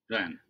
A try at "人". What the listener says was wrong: Ren. Yeah, just stretch a little bit longer of each word.